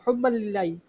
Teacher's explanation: اللہ عز و جل کے لام سے پہلے یہ دیکھو زیر ہے، ٹھیک ہے، اس صورت میں یہ باریک پڑھا جاتا ہے